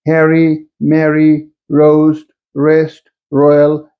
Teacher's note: if this R occurs before a vowel, it is pronounced just like in the British English. For example, Harry, Mary, roast, rest, royal, etc.